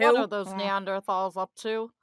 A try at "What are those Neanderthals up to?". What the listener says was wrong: It sounds like you've got a cold. You need to open up a little. closer in the right spot. And then and then you need glottal fry it.